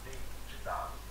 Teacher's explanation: Em vez de você encostar a língua na ponta do dente, Au lieu de toucher avec la langue dans la pointe des dents, vous touchez sur le palais.